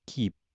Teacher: Now, in the word keep, there's a little bit of air that comes out after the phoneme represented by the letter K. If I pronounced it without the air coming out, without the aspiration, keep, it wouldn't make a difference in the meaning of the word. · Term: unaspirated k sound